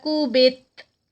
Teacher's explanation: لیکن تا کا ہمس ہوگا یعنی اس پہ آواز تھوڑی سی سانس جاری رہے گی